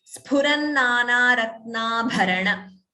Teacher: sphu, not f, no f sound.